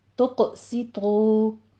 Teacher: تا باریک ہے، قوف پر ہے، سین باریک ہے، طا پر ہے ، تقسطو، تو میں واو مدہ ہے، 2 کاؤنٹ کریں گے،